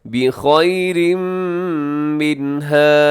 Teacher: بخیر منہا، اب بخیرن کے آخر میں تنوین ہے، منہا کے شروع میں میم ہے، یہاں ادغام کیجیے گا غنے کے ساتھ